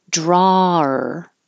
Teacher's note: you're pronouncing draw and your jaw opens and your tongue is flat and then curls back for the r